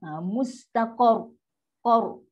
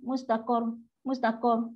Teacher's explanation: Bunyi qar tu macam nak dapat. Tekan pada qaf. Automatik ra ni akan naik. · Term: Ra tafkhim